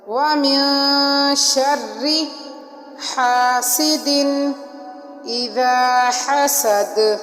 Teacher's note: وَمِن بھی نون ساکن ہے اور آگے شرری کا شرری حروف اخفا میں سے ہے، تو اس لیے ہم نے یہاں پر اخفا کیا، اور را کو ہم نے باریک پڑھا، اور حاسدن حا کو حلق سے نکالا، سین کو سختی کے ساتھ پڑھا، سیٹی کی آواز آئی